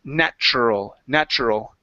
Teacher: So the TU switches to a CH sound.